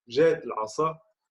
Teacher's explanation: le tzadé correspond dans la prononciation à un S emphatique en judéo-arabe